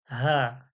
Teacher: হা হালকা পাতলা আওয়াজে হলকের শুরু কণ্ঠনীর শুরু থেকে